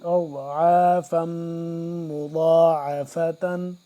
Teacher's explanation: میم یہاں پہ مشدد ہے تو اس پہ ہم کیا کریں گے؟ غنہ کریں گے